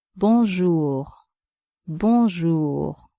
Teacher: Be careful with the R sound too, which is also very different from English. It's like a gargling type sound in the throat.